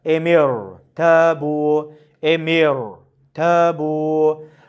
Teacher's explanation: Ama rad'an önce esre ile rağın harekesi arasında rağl hemzesi olduğu için bu esrenin ra eee tesiri olmuyor. Ra esreye rağmen kalın okunuyor.